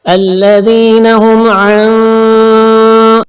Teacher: مالٹا colour نشانی ہے اس بات کی کہ یہاں پر آپ نے گننا کرنا ہے، یعنی کہ ناک سے کچھ دیر آواز نکالنی ہے